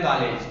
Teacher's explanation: इसका उच्चारण आ और ओ, आ से ओ के मध्य की ध्वनि आ तथा ओ के मध्य की ध्वनि आ के रूप में होता है। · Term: आगत